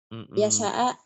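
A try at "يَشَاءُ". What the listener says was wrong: Tapi shinnya ada anginnya ya. Shh. Ya sya'a. Ya sya'a. Shin. Kayak suara angin. Shh.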